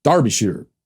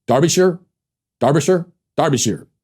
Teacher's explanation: pronounced Darby Shearer with the emphasis on the first syllable